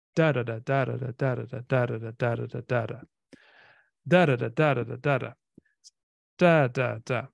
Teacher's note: so we have in English stressed unstressed unstressed stressed unstressed unstressed this is called a Dactyl